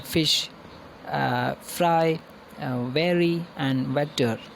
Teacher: these are the sounds produced with bottom lip and upper teeth labia means bottom lip uh bottom labia means bottom lip dental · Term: labidental sounds